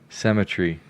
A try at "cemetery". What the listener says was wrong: You're saying two different words. You're saying cemetery and symmetry. Cemetery.